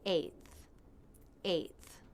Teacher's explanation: the unvoiced TH where the tongue tip comes through the teeth · The A diphthong and the unvoiced TH. Eighth. The biggest mistake my students make with the A diphthong is that they don't drop their jaw enough for the first sound.